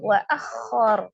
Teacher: Ro-nya disukunkan karena waqaf. Ro fathah dibaca dengan tebal. Ro sukun sebelumnya fathah dibaca juga dengan tebal ya, tafkhim. Jadi ro-nya di sini tebal.